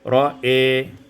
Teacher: Pada ayat yang ke-18, ra'a imalatu fathatil hamzati wal alif, dibaca imalah fathah hamzah dan alif, menjadi ra'i.